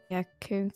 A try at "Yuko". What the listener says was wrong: Don't say the Y. Just like you. Just like you. Yuko.